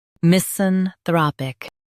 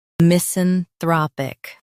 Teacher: Emphasize thra in US, throp in UK.